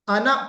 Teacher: अना, ये अलिफ बज़ाहिर बना हुआ है, लेकिन हम इसको अना पढ़ेंगे। कुरान पाक में जहां भी अना लफ्ज आया है, अना, उसको यानी अलिफ को हम नहीं पढ़ते, अलिफ को नहीं पढ़ा जाता।